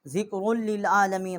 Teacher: اور یہاں پر ہم نے بقول شیطان الرجیم، نون کو را کے ساتھ مشدد کیا ہے، اور ذکر للعالمین، را کو لام کے ساتھ مشدد کیا ہے